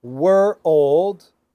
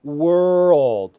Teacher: you want to take them were old, and then a little closer together, were old, and then closer together, were old, and then link them together, world